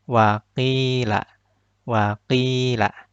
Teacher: Kasrohnya berada di huruf qaf. Maka ini yang disebut mad tabi'i. Dibaca ki-nya dua harokat.